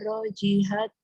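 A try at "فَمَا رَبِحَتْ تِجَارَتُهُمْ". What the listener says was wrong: bukan roji. Robi itu titik untuk huruf ba. Fama robihat.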